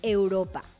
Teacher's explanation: La vocal E está abierta en los diptongos EI, EU.